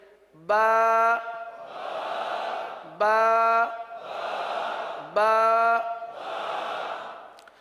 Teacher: با ہونٹوں کے، دونوں ہونٹوں کے تر حصے سے ادا ہوتا ہے